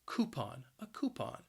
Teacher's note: the word has two syllables and the stress is on that first syllable